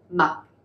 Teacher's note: In English, you pronounce it the Mac with that hard K sound, but this is more like a ma, and you just have a hint of the K at the end.